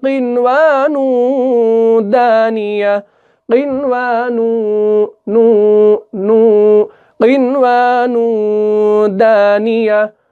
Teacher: دال جو ہے یہ بھی حروف اخفا کا حرف ہے، تو تنوین کے بعد اگر اخفا کا حرف آ جائے تو یہاں پر بھی کیا ہوگا، اخفا ہوگا